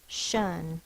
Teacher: Here's the syllable break, so that it's closed, which should be short. But it's not short because it's in the unaccented syllables, so it's the schwa